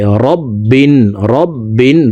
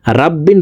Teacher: রকে মোটা করে পড়তে হবে। রব্বিন পড়তে হবে, রাব্বিন পড়া যাবে না।